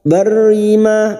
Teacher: ma fathah diikuti alif 2 harakat kita panjangkan